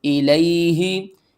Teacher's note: یا ساکن سے پہلے زبر ہے، حروف لین ہیں، جلدی کے ساتھ پڑھیں گے